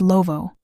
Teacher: Closed consonants soften. Vowels expand. Love becomes lovo. The mouth does not shut. It exhales. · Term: West African speech patterns